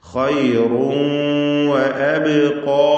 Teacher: അതുപോലെ ഖൈറുൻ എന്ന റാഇനും തഫ്ഖീം, റാഇന്റെ തൻവീൻ ശേഷം വാവ് വന്നതുകൊണ്ട് ആ വാവിലേക്ക് ലയിപ്പിച്ച് മണിക്കണം. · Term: ഇദ്ഗാം ബിഗുന്ന നാഖിസ്